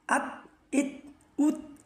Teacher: উত বলার সময় আমার ঠোঁটটা চুক্কা হয়ে গেছে